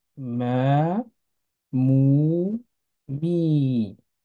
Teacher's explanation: Le alif va prolonger le son A, le waw va prolonger le son OU, et le ya va prolonger le son I. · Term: voyelles longues